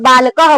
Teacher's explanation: जैसे बालकह बोले तो ह जो है थोड़ा देरी तक ले जाते हैं, लेकिन जब ये निशान लगा रहेगा तो हमको आधा विसर्ग लगा के बोलना है, पूरा विसर्ग लगा के नहीं बोलना, आधा लगा के बोलना है।